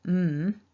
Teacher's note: to make the mm we need to bring the lips together and it forces the sound up into the nose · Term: nasal